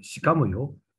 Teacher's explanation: would be spoken as shikamoyo with a rising intonation by a speaker whose character image is that of a woman